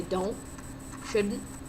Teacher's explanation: if a word ended with a sound like don't or shouldn't he completely took off the T sound so he would say don't shouldn't and me speaking I don't